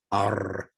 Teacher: R, where the tongue rises also, but it doesn't become stuck at the top. It trills. R, like the Spanish rolling R.